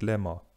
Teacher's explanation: Weil hier eine völlige Angleichung vorliegt, hier das [b] also komplett verschwindet, spricht man auch von einer totalen Assimilation, während die anderen Beispiele, die wir bislang hatten, nur partielle Assimilationen waren.